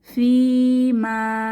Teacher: এখানে দুইটা মাদ এসেছে প্রথম ইয়ামাদ এর পরবর্তীতে আছে আলিফ মাদ তো দুটাতেই টেনে পড়তে হবে